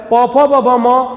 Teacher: इनके उच्चारण के दौरान दोनों ओठ आपस में स्पर्श कर रहे हैं, इसलिए इन्हें हम ओष्ठ ध्वनियां कहते हैं और प वर्ग की ध्वनियां भी बोलते हैं।